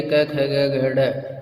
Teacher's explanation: क वर्ग जो पूरा होता है वो कंठ और जीवा के मध्य भाग पर स्पर्श होता है। यानी ये पूरा जो क वर्ग है इसको बोलते समय जीभ हमारी जो है वो कंठ और कंठ को स्पर्श करती है और जीवा के मध्य भाग का स्पर्श होता है।